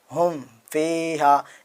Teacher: تو نیچے ہم آتے ہیں تو یہاں پہ دیکھیں اظہار شفوی لکھا ہوا ہے، ہا میم پیشم، فا یا زیر فی، میم ساکن کے بعد واو یا فا آئے تو وہ اظہار شفوی ہوگا، مطلب گننا نہیں ہوگا